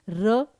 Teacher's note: अब ये जो र है वो आपकी लुंठित ध्वनि है सघोष है अल्पप्राण है